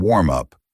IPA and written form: wɔːrm ʌp (WARM UP)